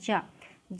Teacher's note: जा अक्षर जो है हमारा स्पर्श संघर्षी व्यंजन कहा जाता है